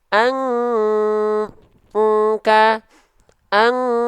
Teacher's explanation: Kenapa? Karena si dengungannya semua masuk ke dalam rongga hidung, makanya kuat sehingga terdengar seperti dengungan eng. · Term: dengungan yang kuat